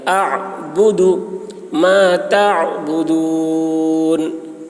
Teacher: حمزہ عین سے مل کر عین کو حلق سے ادا کریں گے.